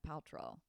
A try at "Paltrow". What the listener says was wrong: You said it with an L. It sounded like you said it with an L.